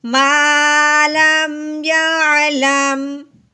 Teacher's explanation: लाम मीम ज़बर लम या लम, आगे वक़फ़ यअलम। लहजे को हमने नीचे की तरफ लेके आना है ताकि हमें सुनने वाले को और हमें समझ आ जाए कि यहाँ पे बात एक दफ़ा मुकम्मल हो गई है यानी कि वक़फ़ हो गया है।